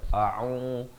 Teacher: Hamzah di pangkal kerongkong, ain di pertengahan kerongkong, bari dhammah, au dengan 2 harakat.